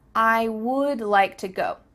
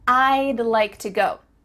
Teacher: Do you see how we can speak quicker because we're cutting off all the sounds in the word would except for that final D